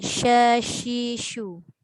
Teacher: Angin tu dilepaskan dengan berhamburan tapi tapak dia adalah di tengah lidah bawa ke lelangit keras bahagian atas. Itu satu juga huruf tafashi, iaitu huruf shin.